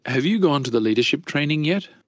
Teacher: Chữ yet này nó sẽ lên giọng, các bạn thêm dấu sắc hoặc là dấu hỏi.